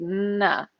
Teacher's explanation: So my tongue is behind my teeth, na. And then I drop it down, it makes a na sound. So na. So it's a whole little dance of my tongue kind of pulling back, moving forward, dropping down.